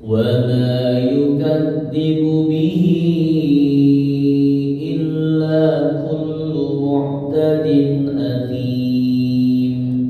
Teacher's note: bihinya itu mad silah thawilah ya jadi panjangnya empat harakat